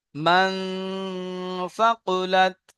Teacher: যেমন মান ফাকুলাত মান ফাকুলাত মিমের উপরে জবার আছে জবারটি হল হারাকাত হারাকাতকে টান্না দিয়ে তাড়াতাড়ি পড়তে হয় নুনের উপরে সাকিন আছে নুন সাকিনের পরে হরুফে ইকফার 15 টি হরফের মধ্যে ছা এসেছে তাই নুন সাকিন কে এক আলিফ পরিমাণ গুন্না করে পড়তে হয় সা এর উপরে জবার আছে জবারটি হল হারাকাত হারাকাতকে টান্না দিয়ে তাড়াতাড়ি পড়তে হয় কফের উপরে পেশ আছে পেশটি হল হারাকাত হারাকাতকে টান দিয়ে তাড়াতাড়ি পড়তে হয়।